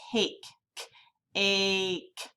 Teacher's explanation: Can you hear that A sound? Instead of making an ah sound, it's making an A sound. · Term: long A